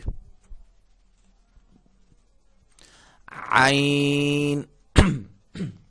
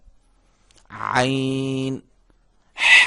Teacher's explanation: عین یہ بھی حلق سے ادا ہوگا, حلق کے درمیانی حصے سے